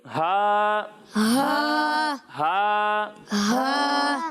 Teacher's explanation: جب ہم ہا کی ادائیگی کریں گے تو اسے حلق کے نچلے حصے سے پڑھیں گے